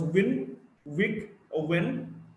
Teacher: R as the word roll, or rare, or wrist. W, voiced bilabial approximant.